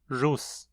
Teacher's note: Quando no início de uma palavra, ele é pronunciado como uma fricativa alveolar sonora não sibilante